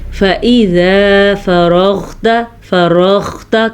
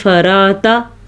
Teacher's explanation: غین کی آواز آنی چاہیے اور غین کو موٹا بھی کرنا ہے